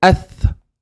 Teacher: So notice the tip of my tongue for tha touches the tip of the teeth.